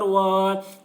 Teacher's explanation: واو کے اوپر کھڑا زبر ہے، کھڑا زبر برابر ہوتا ہے الف مدہ کے، اس لیے کھڑا زبر کو ایک الف کے برابر کھینچ کر پڑھیں گے